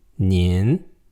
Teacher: The voice goes slightly up and it's got an N at the end.